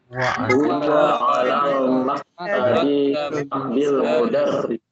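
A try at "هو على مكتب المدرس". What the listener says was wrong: Nah, maktabnya tidak pakai alif lam ya. Jadi kita ulang.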